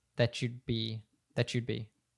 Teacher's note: usually in American English when we have a t followed by a y sound it turns into a CH sound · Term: connected speech